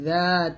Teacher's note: জাল যখন উচ্চারণ করবেন জিহ্বাটা উপর দাঁতের আগার সঙ্গে লাগিয়ে জালটা পাতলা করে উচ্চারণ করবেন